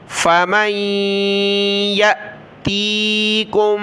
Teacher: حمزہ ساکنہ جھٹکا دیا